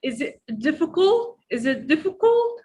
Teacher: Don't drop the T here. Make it stop.